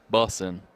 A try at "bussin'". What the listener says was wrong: I don't think you pronounce the G, so bussin'. Bussin'. Yeah, like you're bussing it to school.